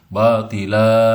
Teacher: asalnya batilan karena berhenti menjadi batila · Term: mad iwad